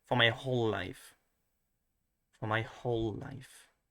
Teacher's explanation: I think I stress especially the whole.